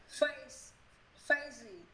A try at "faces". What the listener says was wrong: Ủa phải, sao mà face gì? Phải faces. Faces. Ủa nó không có gì em, nó là xì chứ sao mà gì? Em đọc thầy, mà em có đọc là face không không? Faces.